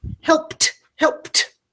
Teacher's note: the ed past tense ending is making a T sound like Tom